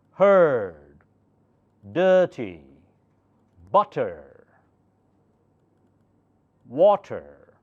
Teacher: now last R is not pronounced in British words British English